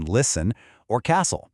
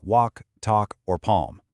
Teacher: You never hear the T in listen or castle, and that L totally vanishes in words like walk, talk, or palm.